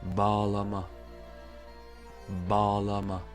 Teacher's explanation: On voit bien que le A qui précède est allongé. Aussi, on va pas rentrer dans les détails, mais selon l'accent, vous pouvez entendre un léger G à la place de ce G apostrophe avec l'accent circonflexe.